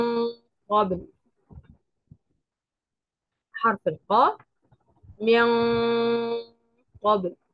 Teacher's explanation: النون الساكنه بعدها حرف القاف حرف القاف حرف مفخم فلذلك هتيجي الغنه هنا مفخمه غنه اخفاء مفخمه طب انا بعمل ايه انا برفع اللسان برفع